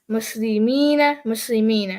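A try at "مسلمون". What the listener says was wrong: Don't rush the end. Relax. Muslimuna.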